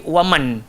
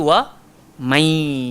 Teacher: Nun kena masuk dalam ya. Seolah-olah nun tu tak ada pun. Terus lepas mim tu jumpa ya.